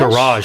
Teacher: the stress is on the second syllable for American English